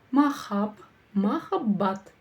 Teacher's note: Разделили по слогам и прочитали. И ударение будет стоять на последнем слоге.